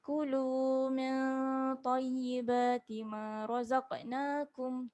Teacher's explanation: Kulu min dengung dua harakat.